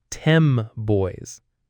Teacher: It sounds like 10 boys. The N sound turns into an M sound. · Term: assimilation